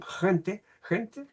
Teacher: el postdorso de la lengua que se eleva hasta el velo del paladar